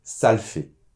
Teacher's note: Alors, là aussi au niveau de la prononciation, attention parce qu’on ne prononce pas totalement le « le ». On va dire plutôt : « Ça l’fait », le « -e » tombe.